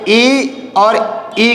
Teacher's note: इन दोनों स्वरों का उच्चारण करते समय जो हमारी जीभ है वो तालु को टच करती है, तालु को स्पर्श करती है, तो इन दोनों का उच्चारण स्थान क्या होगा? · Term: तालव्य